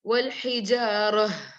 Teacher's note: you have to pronounce the ha properly, like you're releasing your breath. والحجارة. Ha should be clear.